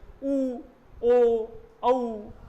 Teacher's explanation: जब हम ऊ बोलते हैं तो हमारे देखिए होंठ एकदम गोल हो जाएंगे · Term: वृत्तमुखी